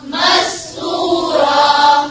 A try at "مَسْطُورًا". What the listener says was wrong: मीम को नहीं मोटा करना, नासीन को, सिर्फ ता को।